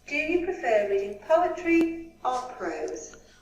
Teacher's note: The speaker's voice rises on the first choice. So we go up, up, up, then falls on the last choice.